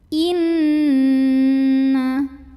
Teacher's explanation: Bunyi N-nya tahan sampai kerasa masuk ke hidung. Kurang lebih 2 harokat. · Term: gunnah musyaddadah